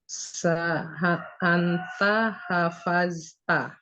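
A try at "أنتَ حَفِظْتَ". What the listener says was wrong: Fi, bukan fa. Hafizu, bukan hafazu.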